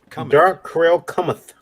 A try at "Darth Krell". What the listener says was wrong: Darth. you said dark, but it's Darth. Darth Krell.